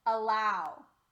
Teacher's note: the a is our sound changed from ah to uh and we call that a schwa